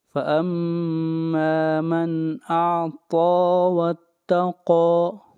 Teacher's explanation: إِنَّ سَعْيَكُمْ لَشَتَّىٰ، فَأَمَّا مَنْ أَعْطَىٰ، ما کو لمبا کریں گے ایک الف کے برابر، مد اصلی ہے۔ من کے اوپر اظہار کریں گے، نون ساکن کے بعد حروف حلقے میں سے حمزہ ہے۔ فَأَمَّا مَنْ أَعْطَىٰ وَاتَّقَىٰ، قاف حروف مستعلیہ میں سے ہے، موٹا پڑھا جائے گا۔